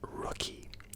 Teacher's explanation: r is pronounced as it's like you feel your your tongue vibrating when you say the word